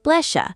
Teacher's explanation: Oh, and S plus Y becomes sh.